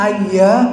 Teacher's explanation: ada alif mad tobe'i, panjangnya 2 harkat